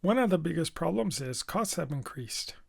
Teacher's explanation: she's linking sounds from the end of one word to the beginning of the next word. This is a kind of slurring.